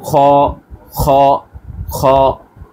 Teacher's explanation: বাংলায় আমরা বলি খ একটু সামনের থেকে, এটা বলতে হবে আর একটু পেছন থেকে। খ খ, একটু চাপ দিয়ে।